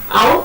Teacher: Ow is a glide from a back open unrounded vowel to a back rounded vowel just above half close.